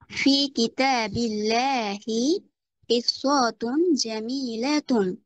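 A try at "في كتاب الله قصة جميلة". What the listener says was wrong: আপনি টান দিচ্ছেন কেন?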